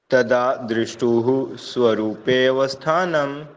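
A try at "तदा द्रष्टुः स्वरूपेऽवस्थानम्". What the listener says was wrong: आपने बोला दृश, द्री की मात्रा नहीं है इसमें, आपने दृष्टु बोला। हाँ, द्रव ई नहीं आएगा ना इसमें, द्र। तदा द्रष्टु, आप द्री बोल रहे हो, द्री नहीं आएगा, द्र आएगा। द्रष्टु स्वरूपेवस्थानम।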